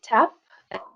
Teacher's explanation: Avec tap, on a le T aspiré. Donc il y a beaucoup de H après